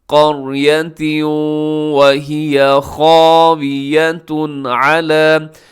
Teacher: خاویہ میں خا موٹا الف موٹا، اور اس کے آخر میں تنوین کے بعد عین حروف حلقی میں سے یہاں پہ اظہار حلقی ہوگا۔ · یہاں ادغام ہو رہا ہے، تنوین کے بعد واو ہے تو ادغام یرملون